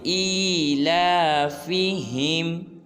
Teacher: حمزہ کھڑی زیر ای ہے، اس کو ایک الف مقدار لمبا کریں گے